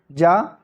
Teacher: तो स्पर्श संघर्षी व्यंजन इनमें से जा है